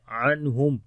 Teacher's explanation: نون ساکن کے بعد ہا آ گئے، اظہار کریں گے